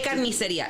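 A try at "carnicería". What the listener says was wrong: You're supposed to roll your R's and shit.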